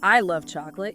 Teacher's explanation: Even if I and chocolate are quick, love pops out, right? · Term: stress